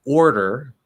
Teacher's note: not only do you have first an r-colored vowel or then you have the flapped d going again into er